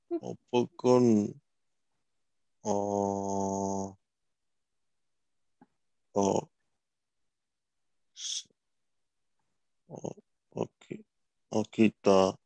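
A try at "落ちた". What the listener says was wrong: Close. That's actually a chi. Ochita.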